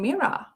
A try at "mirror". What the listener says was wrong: Mirror. I can't even hear the other two R's in what you're saying. Mirror, mirror on the wall. Mirror. It's just mirror. Looking in the mirror.